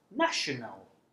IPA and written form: ˈnæʆənəl (national)